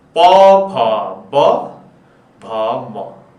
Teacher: त्यसपछि अर्को छ क पछाडी ओ, ख नम्बरमा छ सूत्र अनुसार ओ, ओ भनेको ओष्ठ, ओष्ठ भनेको ओठबाट सक्रिय भएर उच्चारण हुने। ओष्ठ भनेको हाम्रा दुईटा ओठ तल र माथिका दुवै ओठहरू जोडिएपछि उच्चारण हुने वर्णलाई ओष्ठ वर्ण भनिन्छ। यहाँ हाम्रो दुईटा ओठ छन्, यो दुईटा ओठबाट चाहिँ उच्चारण हुने वर्ण ओष्ठ हो।